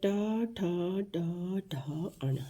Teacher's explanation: ये मूर्धा को टच करते हुए आते हैं तो ये मूर्धन्य हैं।